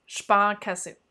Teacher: C'est comme s'il y avait un autre A quasiment derrière.